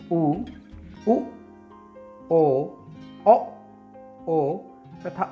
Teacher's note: पश्च स्वर से तात्पर्य मुख के अंदर पीछे वाले भाग से इन स्वरों का उच्चारण होता है।